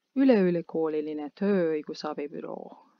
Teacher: we have to pay attention not to say just with one longer “ö”